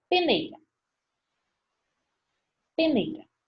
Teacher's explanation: Decrescente, porque tem vogal, que se sobressai, e semivogal. Mais forte, mais fraco.